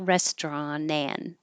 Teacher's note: you don't have to say the T and the N can connect